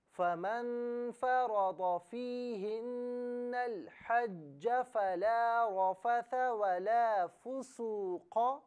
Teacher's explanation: فیہن اور الحج دونوں کو ساتھ ملا کر پڑھیں گے تو نون کو لام کے ساتھ ملائیں گے، حمزہ کو حذف کر دیا جائے گا، اور دونوں کو علیحدہ علیحدہ پڑھیں تو اسے الحج پڑھا جائے گا، حمزہ پر زبر ہوگا۔